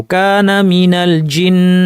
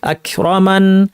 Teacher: গুন্নাটা লম্বা করে তারপর থামবো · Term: লম্বা গুন্না